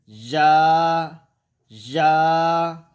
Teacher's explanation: زبان کو ذرا پیچھے ہٹا کے وسط زبان بالمقابل اوپر کا تالوں، اس سے یا ادا ہوتا ہے